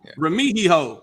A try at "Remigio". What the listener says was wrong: He-O, not he-ho. He-O. Remigio.